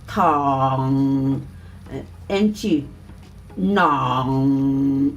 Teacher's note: You can hear the vibration here, and then you can feel the strength, okay? And then you can hear the sound comes out from the nose for the ng sound